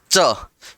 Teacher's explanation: आप बोलते हैं च, जीभ तालू से चिपकेगी, जीभ तालू से नहीं चिपकेगी तो च का उच्चारण नहीं होगा।